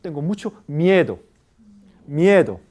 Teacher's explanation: cuando usted quiere enfatizar en caso de español usted puede prolongar la vocal tónica